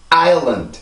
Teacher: 2음절이니까 리듬이 2개예요. 큰 리듬 하나, 그리고 작은 리듬이 이렇게 하나. 근데 학생들을 보면 요 뒤에 발음에 강세가 없기 때문에 학생들이 여기는 강세가 없다라고 생각을 해요.